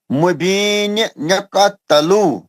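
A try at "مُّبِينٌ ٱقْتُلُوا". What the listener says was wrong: تلو نہیں، پیش ہے طلوع گول ہوٹوں سے. اقتلو پیش لگا نا. طلوع گول ہوٹوں سے.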